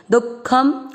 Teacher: इस चीज को क्लियर रखिएगा कि दु के बाद में विसर्ग नहीं है, हिंदी में भी दुख ऐसे ही लिखा जाता है। केवल ख पे जो अनुस्वार है वो संस्कृत के कारण ऐड हुआ, इसलिए उसको अपन ने आधा म पढ़ लिया